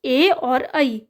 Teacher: next है आपके पास ए और ऐ, इनका होता है कंठ तालव्य से